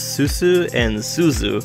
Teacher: They tend to elide the sounds of zu and su into a single noise. The words susu and suzu sound like the same word in a lot of Tohoku dialects.